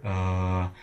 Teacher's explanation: question about what's in the center of the IPA vchart uh it is a nondescript sound it's not high it's not low it's not front it's not back it's lazy it's where your vocal apparatus just sort of naturally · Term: the uh sound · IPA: [ə]